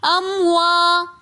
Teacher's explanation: امواتن کے اندر الف مدہ ہونے کی وجہ سے ہم اموا تھوڑا سا کھینچ کر پڑھیں گے۔